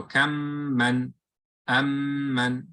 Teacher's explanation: You close your lips on the meme, and then you open on the other meme. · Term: Idgham